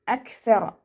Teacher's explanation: കാഫ് കൽക്കല ലെറ്ററില്ലാത്തത് കൊണ്ട് half സുക്കൂന് കൊടുക്കുക. പിന്നെ കാഫിന് സുക്കൂനാവുന്ന സമയത്ത് കുറച്ച് എയർ പുറത്തോട്ട് പോകുന്ന ഒരു സൗണ്ടിൽ വേണം ഉച്ചരിക്കാനായിട്ട്. അക്സറ കുറച്ച് എയർ പാസ് ചെയ്യണ സൗണ്ട് കൊടുക്കുക കേട്ടോ.